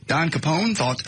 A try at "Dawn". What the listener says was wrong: you said Don. Obviously it's Dawn.